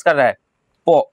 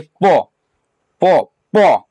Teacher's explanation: पो बोल कर देखिए किसको स्पर्श कर रहा है, पो, ओष्ठ को।